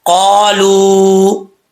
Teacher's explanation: واو ساکن سے پہلے جب پیش ہو تو واو مدہ ہوتا ہے، ایک الف کی مقدار لمبا کیا جاتا ہے۔ یہاں پہ واو مدہ ہے، اور یہاں اس کو ایک الف کی مقدار لمبا کریں گے